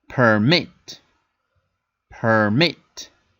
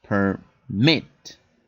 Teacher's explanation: the emphasis of this word is at the end so I say and this finishes in consonant vowel consonant